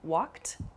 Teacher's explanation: you might hear a word like walked also which has a sort of T sound about it